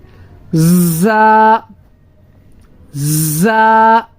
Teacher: سیٹی والا حرف، جب اس کو ہم پڑھیں گے تو سیٹی کی آواز پیدا کریں گے